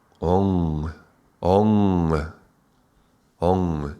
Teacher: that M becomes a very nasal ng sound, which translates as almost like a G